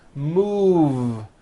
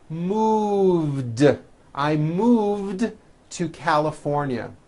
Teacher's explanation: Move has that voiced V sound.